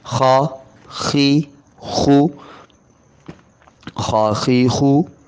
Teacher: گلے کے شروع سے ادا ہونے کی وجہ سے پر موٹے پڑے جاتے ہیں، تو یہاں بھی آپ کو موٹا بھی پڑھایا جائے، طلباء کو ساتھ سمجھا بھی دیا جائے کہ گلے شروع سے آواز پیدا ہو رہی ہے، اس وجہ سے حرف کی آواز پر ہے، موٹی ہے۔